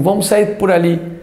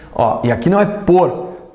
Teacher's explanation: Aquele por que sai quase com som de U.